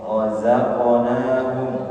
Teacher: Wa mimma razaqnahum, pertama fathah, maka sudah pasti tebal ya, bukan ro tapi menebalkannya dengan cara mengangkat pangkal lidah